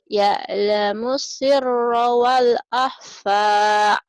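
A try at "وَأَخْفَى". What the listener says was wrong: Bukan wa, tapi wa akhfa, nggak ada lamnya. Ya'lamus sirra wa akhfa.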